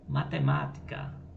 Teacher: a penúltima sílaba é a tônica e a palavra matemática e ela vai ser a antepenúltima sílaba tônica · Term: proparoxítonas